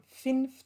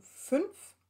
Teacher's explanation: Mittelhochdeutsch kurzes I wird zu neuhochdeutschem Ü, kurzes Ü, Beispiel hier von Finf zu Fünf.